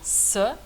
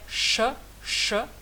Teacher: La langue, elle va de devant vers un peu en arrière pour aller vraiment en arrière. Donc avec le s, elle est devant, s.